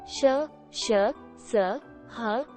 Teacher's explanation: जिन व्यंजनों का उच्चारण करते समय वायु मुख से तीव्र गति से रगड़ खाकर निकलने के कारण ऊष्मा पैदा करती है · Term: ऊष्म व्यंजन